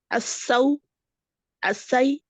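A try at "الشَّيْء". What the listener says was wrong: Alors ici, c'est pas un signe, c'est un chine.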